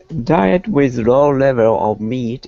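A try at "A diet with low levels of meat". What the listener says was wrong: could you read that again? And pronounce the S's at the end of the words. Levels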